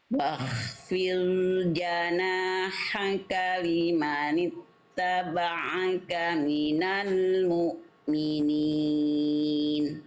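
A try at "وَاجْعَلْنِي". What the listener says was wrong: Bunyi dnya kurang solid, Bunda. Huruf don makhrajnya di mana, Bunda?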